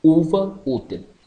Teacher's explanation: U fechada, posterior, oral, arredondada,